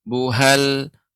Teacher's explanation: tempat keluarnya huruf ha itu bagian bawah bersama Hamzah